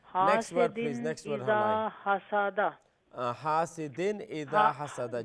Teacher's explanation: ہا کو لمبا کرنا ہے الف مدہ کی وجہ سے، اور دال کے نیچے تنوین کسرہ، اس کو ظاہر کر کے پڑھنا ہے، اس کے تنوین کی وہ اظہار ہے. · زال کو لمبا کرنا ہے الف مدہ کی وجہ سے